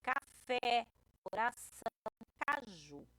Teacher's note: Quando essa última sílaba é a mais forte, a gente diz que a palavra é oxítona